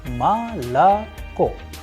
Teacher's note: the stress or the udarenie is falling onto the last O, and that is why the first two O sounds like A